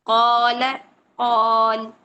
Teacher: कौ अलिफ मद्दा हो रहा है, 2 हरकत खींचिए और लाम को नहीं खींचना है, लाम एक हरकत में पड़ा जाएगा।